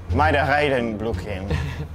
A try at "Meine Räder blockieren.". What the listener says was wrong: Don't try to get in an aggressive mood to talk. Just say what I say.